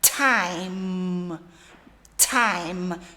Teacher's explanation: E o T é t, é soprando, dando um soprinho.